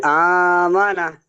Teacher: জি আমানা আমানা, টান দেবেন তো, এক আলিফ পরিমাণ টান দিয়ে পড়বেন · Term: মাদ্দে বদল